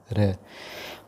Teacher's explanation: प्रकंपित व्यंजन जिनके उच्चारण में जिह्वा में कंपन हो वे व्यंजन प्रकंपित व्यंजन कहलाते हैं। वो है र।